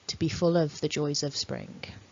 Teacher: you could say joys of with the weak form, with the schwa. So it really depends how formal or informal you're being and whether you want to really connect it up, how quickly you're speaking. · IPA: /ə/